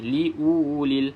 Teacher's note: wau yang ada tanda mati ni kita abaikan dia dalam bacaan jadi tak perlu kita baca panjang